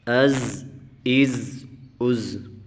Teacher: زا کو پڑھتے وقت ہم سیٹی سے پڑھیں گے، کیونکہ یہ زا جو ہے سیٹی والے حروف میں سے ہے